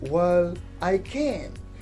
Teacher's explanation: For example, if I tell you that you can't do it and you tell me, well, I can. So you are putting primary stress on the modal auxiliary verb can.